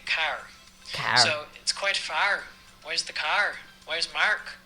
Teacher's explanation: You're changing your R's and you're switching those from AR to an OUR sound. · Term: Irish accent